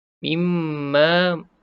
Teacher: Bila mim bersabdu, sama macam nun bersabdu, kita pun dengung dua harakat di situ. Wajib bergunnah.